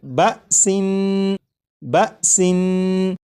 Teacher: اس لفظ کو جب آپ نے پڑھا جیسے بسن، تو سین کو پڑھتے ہوئے آخر میں جو نون ہے، نون کی ادائیگی کرتے وقت آپ نے غور کیا ہوگا کہ زبان تالو سے لگی